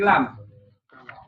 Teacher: Ini lam itu di sisi depan lidah menyentuh gusi atas. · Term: huruf lam